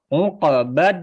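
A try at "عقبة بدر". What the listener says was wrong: Nah, jangan dar. Roknya ditebalkan Pak ya. Uqbadar. Badar. Di dalam mulut, jangan dikeluarin. Jangan dar. Jangan dikeluarin suaranya, tapi di dalam mulut.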